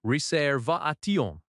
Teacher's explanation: In the sentence, I have a reservation, the stress is on va in reservation